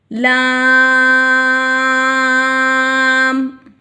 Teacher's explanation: मददे फरी है तीन अलिफ की मकद में लंबा करके पढ़ेंगे